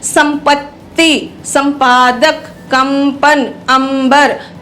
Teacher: प और ब जो इसमें आए हैं वर्ण अनुस्वार से बिंदी से पहले, वही निर्धारित करते हैं कि यहाँ पर जो अनुस्वार बोला जा रहा है वो म है